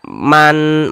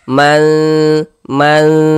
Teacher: Cara membaca ikhfa itu dibaca samar dan berdengung.